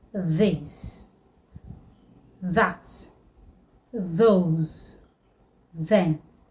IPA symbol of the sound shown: ð